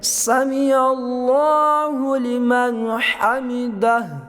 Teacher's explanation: اللہ کا لام موٹا کیا ہے اور آگے ہا نکالی ہے اور ہا کو وقف کیا ہے